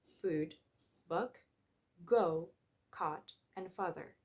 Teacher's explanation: There are 5 back vowels in English which can be found in food, book, go, caught, and father. These vowels are produced with tongue positioned towards the back of the mouth.